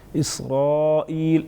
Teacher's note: الف مدہ ساتھ میں بڑا مد 5 سے 6 الف کے برابر کھینچ سکتے ہیں